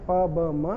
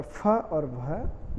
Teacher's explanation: प वर्ग में प, ब, म अल्प प्राण है और फ और भ जो है वो महाप्राण है